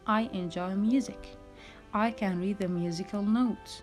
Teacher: maybe you notice that my voice is going down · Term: falling intonation